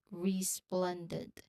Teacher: It starts, as you've noticed, the first syllable is re, and the second syllable is plen. So SPL, the medial cluster for that, it really starts the second syllable. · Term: SPL consonant cluster